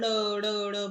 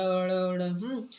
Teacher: ऊपर मूर्धा को स्पर्श करके तुरंत नीचे आती है।